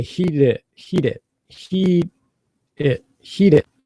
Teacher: a little different because heat it's an imploded releas heat so I put my tongue up on the end of heat but I don't release until I say it · it's a real light tap